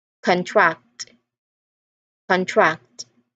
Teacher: We say contract with a stress on the first part, but as a verb, to become smaller or tighter, the stress moves to the second syllable